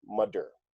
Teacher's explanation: the th might sound like a D